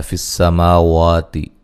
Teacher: ما وا دونوں کو ایک الف کی مقدار کے برابر لمبا کیا جائے گا اور واو کو ادا کرتے ہوئے ہونٹوں کو گول کرنا ہے۔